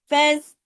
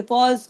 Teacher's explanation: زبان کو نیچے رکھ کے فیض، اگر اس کو اوپر اٹھا کے فوز ایسے کر دیں گے ہیوی ہو جائے گا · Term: باریک حروف